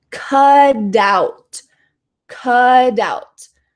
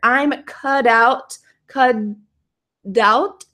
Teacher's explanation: in American English we love to turn T into a D sound so it's possible this T could become a d if you're speaking quickly